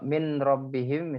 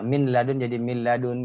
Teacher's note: Karena sempurna masuknya huruf nun sukun ke huruf ra. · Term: idgham kamil